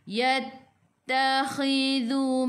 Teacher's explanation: lidah keluar pada gigi depan